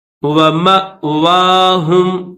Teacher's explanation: اس حمزہ کے اوپر جزم ہے تو اس کو تھوڑا سا جھٹکا لگا کر پھر پڑھیں گے